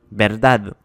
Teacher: Verdad finit par un D, donc on a l'accent sur la dernière syllabe